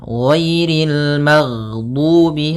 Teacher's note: ghain termasuk salah satu sifat huruf yang dia adalah sifat rokhawah, yang dimana suaranya mengalir. Nah, tapi dia juga termasuk sifat huruf yang dia sifatnya adalah jahar.